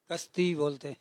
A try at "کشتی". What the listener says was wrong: کشتی. چینی ہٹا دیا آپ نے, سین کر دیا.